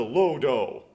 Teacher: they can't really end on that D so with d they tend to make it do so it turns into low do